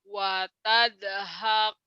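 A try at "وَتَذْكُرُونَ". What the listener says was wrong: Jangan ada e-nya. Watab. Watab. Jangan watad. Watab. Watab. Wat. Ada bulat ya.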